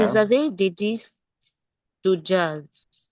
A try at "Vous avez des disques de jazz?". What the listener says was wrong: Read it like an interrogation. It's a question.